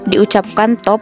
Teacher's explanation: kata bahasa Inggris top diucapkan top dengan T apikodental